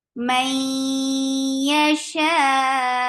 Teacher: idgham with gunna. Keep the sound in your nose for a longer time.